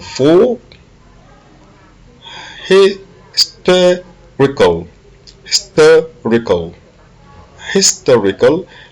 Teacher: l'accent est sur le TER